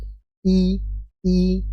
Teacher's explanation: tempat keluarnya huruf hamzah yaitu dari tenggerokan bagian bawah